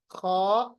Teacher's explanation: खा थोड़ी सी खराश के साथ, थोड़ा मोटा करके, खा। और आप देखिएगा कि पहला जो गले का हिस्सा है, वहां से इनको हमें अदा करना है, खा गैन।